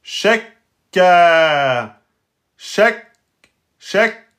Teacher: On bloque le kef, shek. Et après, on sort le a de temps. Shekka. Shekka. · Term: petit blocage